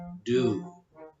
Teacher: the tip of the tongue touches the roof of the mouth just beyond the inner edge of the top teeth